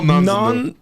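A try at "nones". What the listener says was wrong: None. There's a nun. There's a U and an O. Pronounced differently.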